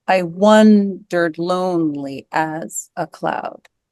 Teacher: I think the stress is on one and lone and as, and maybe the first part of cloud.